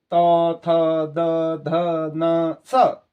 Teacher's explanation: आपकी जो ये जीभ जा रही है ये सीधे जाके आपके दांत को स्पर्श करती है, तब इसका उच्चारण होता है